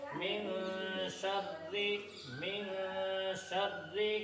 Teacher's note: من شر میں اخفا ہوگا، اس لیے ایک الف کے برابر ناک میں آواز چھپا کر پڑھیں گے